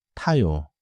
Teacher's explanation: uses the same front tongue place as 디귿, but with a stronger puff